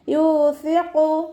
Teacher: കുറച്ച് എയർ പല്ലിൻ്റെ ഇടയിലൂടെ പുറത്തു പോണ സൗണ്ടിൽ വേണം ഉച്ചരിക്കാൻ. സീനായി പോവാതെ ശ്രദ്ധിക്കുക കേട്ടോ. · യാൻ്റെ കൂടെ വാവ് മദ് വന്നു 2 കൗണ്ട് നീട്ടിക്കൊടുക്കുക. സ ലൈറ്റാക്കിയിട്ട് ഉച്ചരിക്കാൻ ശ്രദ്ധിക്കുക.